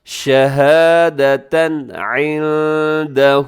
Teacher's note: شہادتن میں تنوین ہے اور تنوین کے بعد عین ہے، یہاں اظہار کیجیے گا